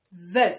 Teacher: this th sound with the idea of Z okay the sound of it but with your tongue up